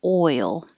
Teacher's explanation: If you say ol, it's halfway there. You just didn't rise enough.